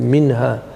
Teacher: You do not delay, you don't extend the ghunna. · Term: izhar